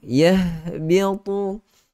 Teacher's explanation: ha yang keluar daripada pangkal tekak kita. Dah dekat dengan dada kan.